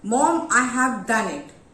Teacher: you want to show happiness in that sentence. So the tone will be rising. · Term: rising tone